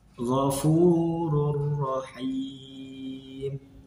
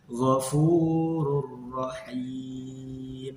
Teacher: Yang pertama ada lam, kemudian ro. Cara membacanya dimasukkan ke huruf depannya tanpa berdengung. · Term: idgham bila gunah